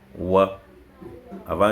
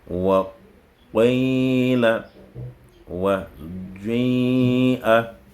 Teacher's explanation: Al-ishmam, c'est le fait de tendre les deux lèvres lors de la prononciation.